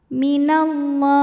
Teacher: Lam pada lafaz Allah dibaca secara tafkhim sebab huruf sebelumnya berbaris fathah, maka dibaca tebal. Minallah. Kemudian alif lamnya dinamakan dengan alif lam syamsiyah karena alif lam menghadapi huruf syamsiyah yaitu lam, maka alif lam tidak kita baca.